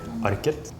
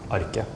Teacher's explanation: some places in Norway you would pronounce the T, so you would say Arket. And in other places in Norway you would just drop the T, like my accent, and then it would just be Arke.